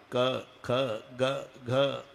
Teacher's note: क ख ग हे कंठे स्थान इथे उगम आहे